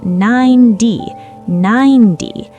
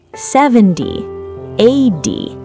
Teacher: The T sound in 90 becomes a soft D in American English. The T in 90 is between two vowels.